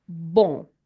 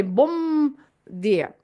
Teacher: If you notice the way I'm saying it, I'm not pronouncing any M at all